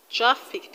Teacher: this word has two syllables and you're going to stress the first syllable